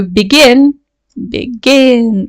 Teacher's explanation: begin, ends in a stressed syllable. So we need to double the n when we add ing to the verb.